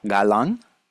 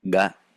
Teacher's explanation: a velar sound because there is closure with the back of the tongue against the velum. And then it is an implosive stop, which we call because the sound is fully closed, but also the sound goes inward.